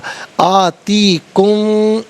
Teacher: آتی کم میں میم ساکن کے بعد میم آ رہا ہے تو دونوں کو مدغم کر کے غنے کے ساتھ ادا کیا جائے گا، میم کی آواز کے ساتھ غنہ کیا جائے گا۔